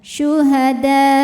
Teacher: ujungnya agak ditekan dinaikkan intonasinya pakai naber ya jadi setelah dalnya enam e dalnya panjang ya Ee Kita tekan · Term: nabar